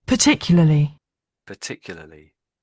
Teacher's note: when the British are saying this word, we do sort of rush the second half of it